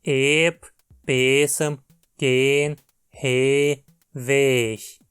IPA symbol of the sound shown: eː